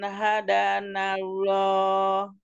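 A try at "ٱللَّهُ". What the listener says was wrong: Ada Allah, lo-nya tebelin. Allah. Allah. Angka lidahnya naik. Kayak kok.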